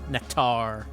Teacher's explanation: Get an emphasis on that second syllable